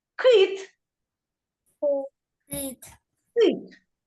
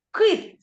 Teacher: язичок напрягається Да він твердо вимовляється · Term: приголосний твердий